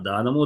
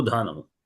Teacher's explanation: రెండో ఉన్న ధకారం మాత్రం మహాప్రాణం అవుతుంది